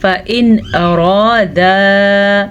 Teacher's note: نون ساکن کو ہم ظاہر کر کے بغیر غنّے کے پڑھیں گے